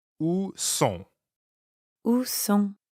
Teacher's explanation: Sont is nasal, so it rhymes with bon, like at the beginning of bonjour.